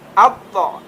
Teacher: To, ti, tu. Dan huruf to ini tidak ada hamas seperti huruf ta ketika disukun. Kalau huruf ta ketika disukun at.